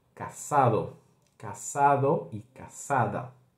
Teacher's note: Vamos sempre ter aqui na América Latina o som do S